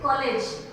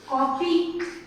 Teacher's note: आ और ओ के बीच का साउंड है कॉलेज, थोड़ा जल्दी से खत्म हो जाता है। जैसे ये दीर्घ स्वर होता है ना आपका, थोड़ा सा लंबा टाइम लगता है।